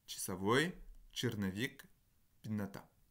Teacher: Le A, le O et le E sont tous les 3 réalisés sous la forme d'un I hors accent après une consonne molle. Voilà, donc par exemple, час черный пенный, vous avez часовой, черновик, пенната. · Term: neutralisation